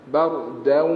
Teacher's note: Idgham ma'al gunnah. Masuk dari hidung. Jangan bardaw. Itu dari mulut.